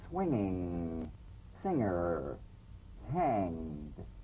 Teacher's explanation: the ng in the middle of the word with no drumbeat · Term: medial